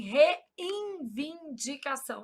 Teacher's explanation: A gente nasaliza esse N na pronúncia